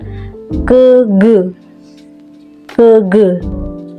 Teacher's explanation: dinaikkan sehingga udara yang dihembuskan dari paru-paru terhambat untuk beberapa saat secara tiba-tiba pangkal lidah yang menekan rapat kemudian dilepaskan terjadilah letupan sehingga udara keluar dari mulut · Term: konsonan hambat letup dorso velar, konsonan hambat letup dorsovelar